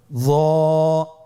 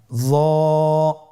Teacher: আপনারা স্ক্রিন লক্ষ্য করুন, জ হরফটি কোন জায়গাতে উচ্চারিত হয়। জিহ্বার আগা, সামনের উপরের 2 দাঁতের আগার সঙ্গে লাগিয়ে উচ্চারিত।